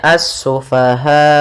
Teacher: dimatikan hamzahnya dengan sifat jahar dan syiddahnya hamzah, yaitu tertahannya nafas dan tertahannya suara